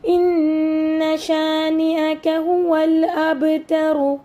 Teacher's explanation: یہاں پہ را کے اوپر پیش ہے تو ہم را کو پر پڑھیں گے